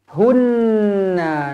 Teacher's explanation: Nun yang bertanda sabdu wajibul gunnah dibaca dengung dua harakat